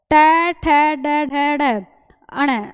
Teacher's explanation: उच्चारण करते समय जीभ जो है हमारी वो बिल्कुल ऊपर के पार्ट से टच होती है और ऊपर का पार्ट क्या होता है मुर्धा होता है तो इनका जो उच्चारण होगा वह मुरधा से होता है। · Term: मुरधन्य